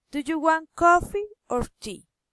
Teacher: Alternative question, rising and falling intonation.